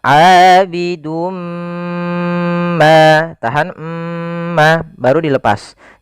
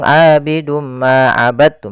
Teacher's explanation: kita masukkan tanwinnya kepada huruf mim, kemudian ditahan. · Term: idgham bi gunnah